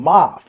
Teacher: the fourth tone ma 5-1